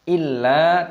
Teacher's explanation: illa, tasdid ditekan dan dipanjangkan lam alifnya 2 ketukan